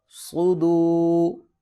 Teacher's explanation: صاد کو موٹا کریں گے کیونکہ یہ حروف مستعلیہ میں سے ہے